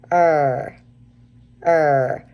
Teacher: when you make the retroflex r your tongue still is on those molars so that's really important part of making that R sound there